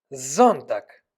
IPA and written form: ˈzɔntaːk (Sonntag)